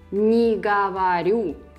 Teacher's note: And you can also see that to make a negation in Russian, you just put не before a verb. And though you write them separately, you read them as one word.